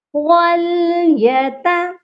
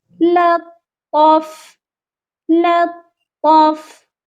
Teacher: پہلے تا کو بالکل باریک پڑھیں گے، وَلْيَتَ، اور دوسری تا کو موٹا پڑھا جائے گا